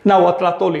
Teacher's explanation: al añadirle otra palabra elimino el saltillo. Eso es nauatratoli, la lengua de los nahuas.